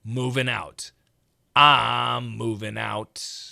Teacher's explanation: when we say ing fast, we typically change to an in sound or even an un sound